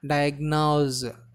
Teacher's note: The stress should be given on first syllable